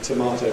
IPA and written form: təˈmɑːtəʊ (tomato)